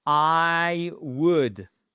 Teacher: le L, vous ne l'entendez surtout pas, et le OU, c'est un O court